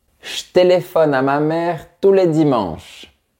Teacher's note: on va souvent dire ch à la place de J donc ça ne vibre pas